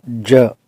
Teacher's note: अपनी जो जीभ की नोक है उसको तालू पे ले जाएंगे और फिर बोलेंगे ज, तो ये साउंड इस तरह से निकलेगी।